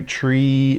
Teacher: we can stretch out that E sound. Maybe hear that E sound at the end.